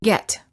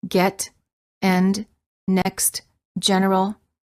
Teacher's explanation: The lips are farther apart than for the A and the lips are relaxed. The tongue is also relaxed and in the mid- high position. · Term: E as in get